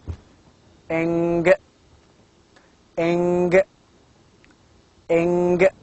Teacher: And again we have a nasal sound of the same group, velar, that is eng, eng, eng. Of course, eng is a velar, nasal, voiced sound.